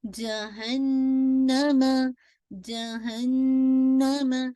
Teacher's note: नून पे अगेन आपका most complete गुन्ना, अकमल गुन्ना